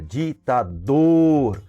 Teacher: O dor é o mais forte, nós pronunciamos com maior intensidade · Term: oxítona